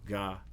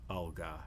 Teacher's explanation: ga is not produced in the same place as alga. It moves back. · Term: co-articulation